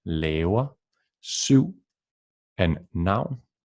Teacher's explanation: after a vowel, the V becomes a W sound. In Danish would be W, as in laver, syv, and noun.